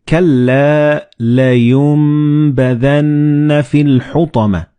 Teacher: And this meme appears in the middle of the word. So the noon and ba, when they follow one another in the same word, you don't pronounce noon, but you pronounce meme. Like in this example, you read كَلَّا لَيُنبَذَنَّ فِي الْحُطَمَةِ.